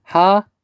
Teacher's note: 캐니까 앞 음절의 받침 히읗 여기 있죠. 그 다음에 뒤 음절의 첫 소리 기역이 만나 키읔이 되어서 하얗게로 발음된다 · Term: 거센소리 되기